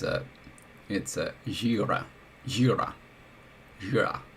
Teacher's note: So it's gira, gira, gira. Stress on the front.